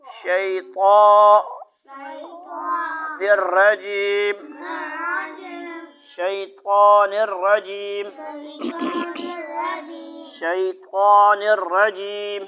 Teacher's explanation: شی بھی نہیں پڑھنا ہے. شین کے درمیان میں غننے کی آواز نہیں آئے گی. ادھر کی طرف شی ہاتھ نہ ہٹاؤ.